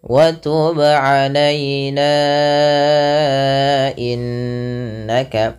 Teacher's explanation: Tapi bila kita sambung nanya wa tub alaina innaka, maka ia menjadi mad jaiz munfasil, yang dimana dipanjangkan nanya sepanjang 4 atau 5 harokat